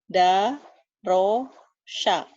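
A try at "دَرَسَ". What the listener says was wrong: Sa biasa. Darosa, saya suka sate. S biasa. Darosa.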